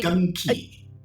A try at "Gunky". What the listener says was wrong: I think you're mispronouncing the second syllable slightly. It is Gunky.